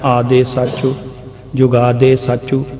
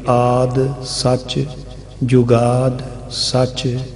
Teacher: ਅਖੀਰਲੇ ਅੱਖਰ ਨੂੰ ਜਿਹੜੇ ਵਿਅੰਜਨ ਹਨ ਉਹਨਾਂ ਦੇ ਵਿੱਚ ਸਿਹਾਰੀ ਤੇ ਅਖੀਰਲੇ ਅੱਖਰ ਨੂੰ ਔਂਕੜ, ਇਹ ਅਸੀਂ ਉਚਾਰਨ ਦਾ ਅੰਗ ਨਹੀਂ ਬਣਾਉਂਦੇ